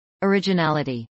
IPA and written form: əɹɪdʒəˈnælɪtiː (originality)